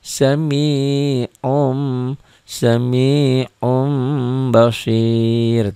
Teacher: antara cetakan Indonesia dan cetakan Timur Tengah ini yaiiun UN berarti bunyi Nun matinya berubah menjadi m mati